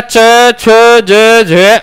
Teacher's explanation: तालु से बोले जाने के कारण इनका नाम हो गया तालव्य